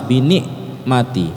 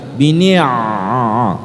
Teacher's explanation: Dan kemudian ni' itu ngalir anginnya, bukan bini', bukan kayak hamzah. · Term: ain